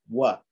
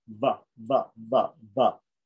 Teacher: If I say va, I'm using the top teeth with the lower lip. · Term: dental and labial